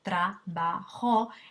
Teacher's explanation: En una palabra como trabajo, que tiene tres sílabas, trabajo, el énfasis está en la sílaba ba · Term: sílaba tónica